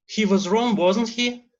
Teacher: we show the meaning of the tag question through intonation, a rising intonation